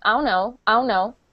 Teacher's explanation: I don't say the words. I just say ow, no, instead of I don't know.